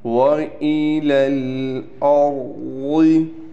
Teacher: را کو ہم نے موٹا بھی کر کر پڑھنا ہے، اس کے بعد ضاد ہے، ضاد کو بھی ہم موٹا کر کے پڑھیں گے